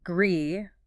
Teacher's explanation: the vowel sound stretches out. It is a long e sound. Gree. You should feel your mouth widening almost like you're pulling it into a smile.